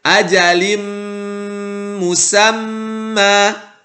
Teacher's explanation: Tanwinnya dimasukkan ke huruf mim, maka menjadi ajalim, bukan ajalin. Kemudian dilanjuti dengan gunnah atau suara yang keluar dari rongga hidung. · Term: idgham ma'al gunnah